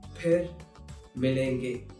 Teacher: most of the times people will use f instead of its right pronunciation, which is ph